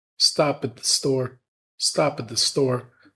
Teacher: So rather than stop at the store, we're linking the word stop to at, and we're reducing the function word at to it. And we're holding the T sound · we're linking the word stop to at, and we're reducing the function word at to it. And we're holding the T sound, so it's not it, the, it's it, the, stop at the store, stop at the store.